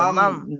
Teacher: এই নুন সাকিন পড়লে হবে না, মান বললে হবে না, মাম। দুটো মিম বলতে হবে, মাম মাম। জি জি জি মাম।